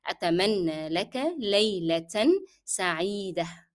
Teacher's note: However, with layla, we will pronounce the tanween laylatan, but when we come to sa'ida, we will drop the sound of tanween. It will be there, it will be written, the tanween will be written, but will be dropped in pronunciation as we are stopping here.